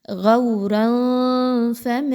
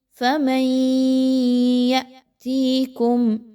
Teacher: غورا فمن، اس کے بعد نون ساکن کے بعد یا کا حرف ہے، یہاں پر دیکھیں تو ادغام مع الغنہ، میم کو ڈائریکٹلی یا کے ساتھ ملائیں غنہ کرتے ہوئے